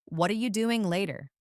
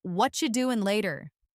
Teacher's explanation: Notice how the T sound softens or disappears.